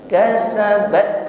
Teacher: huruf tak sukun di sini sifatnya syiddah dan juga hamas. Kasabat yang pertama kita tekan, berikutnya diiringi dengan nafas yang mengalir.